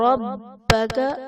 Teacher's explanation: رَبَّكَ با حرف قلقلہ مشدد ہے، یہاں پر خوب جمع کریں گے